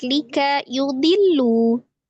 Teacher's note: Lika yudillu, tasdid lam, kemudian ada lafuz jalalah sebelumnya dhammah, maka lullah dibaca dengan tebal atau tafkhim. Lanya mat tabi'i, baca 2 harokat, punya pendek ya.